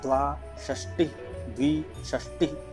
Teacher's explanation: दंत्य स, तालव्य श और मूर्धन्य श। मूर्धन्य श को मूर्धा के पास जिह्वा जाती है, फिर उसका उच्चारण होता है।